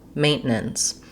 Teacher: the word is going to have first syllable stress. So my main syllable is longer and has a clear vowel. It has the diphthong A.